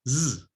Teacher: the voiced alveolar fricative